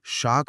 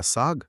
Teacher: श बोलने के लिए जीभ को तालू के पास ले जाकर दबाव बनाना पड़ता है। गर्म हवा निकालनी पड़ती है। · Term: ताल्लव्य श